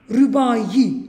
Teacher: Burada həm ahəng qanunu pozulub. Çünki Ü incə A qalındı. Həm də burada səs artımı var.